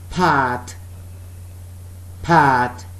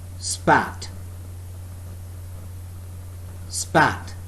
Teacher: Pat, both lips are together and there is a puff of air when we are speaking the word pat